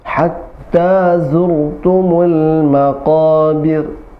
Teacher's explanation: birnya tipis, kenapa? Karena ra-nya sukun sebelumnya kasrah.